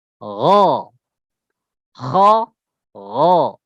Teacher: Ghain dia sifatnya isti'la. Ya, sama seperti kha, ya. Tenggorokan bagian luar.